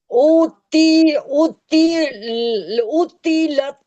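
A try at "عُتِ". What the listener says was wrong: उती नहीं है, ता नहीं है, तो है, तो मोटा पढ़े। ऊती नहीं, खींचने का नहीं बोल रहा मैं, तो को मोटा पढ़ने का बोल रहा हूँ। उत्तिलत इस तरह। ता नहीं है,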